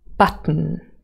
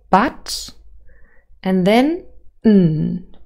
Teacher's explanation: the second syllable really is a syllabic consonant so the main sound here is the um a nasal